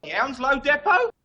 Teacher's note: Not by everyone, but some people in the UK will pronounce this depot, meaning the E at the beginning is pronounced like a eh sound, depot, and the T at the end is silent, so it's not depot.